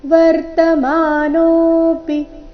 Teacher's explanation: ನೋ ದೀರ್ಘ ಪಿ ರಸ್ವ